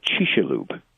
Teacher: In Mayan, they would actually say Chicxulub, because the CX is an SH sound in Mayan